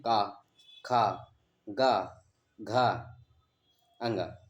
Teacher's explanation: जो क वर्ग है, हम इसको हम बोलते हैं किससे, कंठ से।